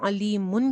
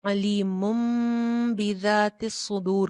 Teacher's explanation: جو تنوین کے اندر کا ہڈن نون تھا وہ کیا ہوا؟ میم میں چینج ہو گیا. اب ہم نے میم کے اوپر صرف ایک پیش پڑھنی ہے اور اس کے ساتھ ایک چھوٹا سا میم لکھا ہوا ہے وہ پڑھنا ہے. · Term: اقلاب